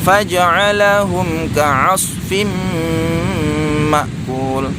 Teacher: ada huruf mim sukun berjumpa dengan huruf kaf, ini tidak boleh didengungkan